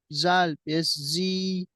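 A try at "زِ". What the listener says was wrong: ये जा, क्या जा के नीचे क्या है? जाल नहीं है, अभी सही पढ़ रहे थे आप। जाल नहीं है, ये जा है, जा। जा, जा, ओनली जा। रा के बाद जो जा आता है वो वाला है।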